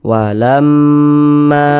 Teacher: mad thii itu panjangnya tuh dua harakat dua harakat itu kira-kira sepanjang dua ketukan